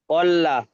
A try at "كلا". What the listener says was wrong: কল্লা নয়, কাল্লা, কাফ এটা। কাল্লা, জি, জি এটা কাফি হবে।